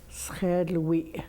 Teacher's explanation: And at the end is a glottal stop. It means that your vocal cord will close and then open. Shirley. When a woman says, my husband, she says, Shirley.